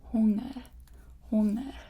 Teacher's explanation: So you don't really pronounce the G.